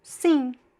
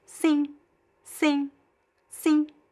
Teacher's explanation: at the end of words, we don't pronounce a clear M sound. So the M sound only happens when the M is followed by a vowel.